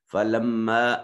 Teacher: وآتوا الزکاۃ، یوں پڑھیں گے۔ فلما، میم مشدد ہے، غنہ واجب ہوگا